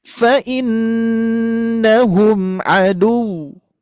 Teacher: Tapi kalau misalkan kita mensukunkan, di wawu bertasydid harus diberikan nabar, yaitu tadi penekanan atau suaranya agak ditinggikan